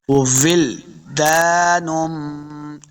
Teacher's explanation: لام ساکن ہے، لام کو جنبش نہیں دینی. بعض لوگ یہاں پہ یہ غلطی کرتے ہیں کہ لام کو قلقلہ بنا دیتے ہیں، لام کے اوپر قلقلہ نہیں کرنا.